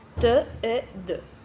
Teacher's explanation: Blocage, les occlusifs alvéolo-dental T et D. Blocage de l'air pointe de la langue derrière les incisives supérieures.